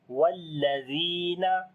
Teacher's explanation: zal we read in soft sound and also we long due to yamadda.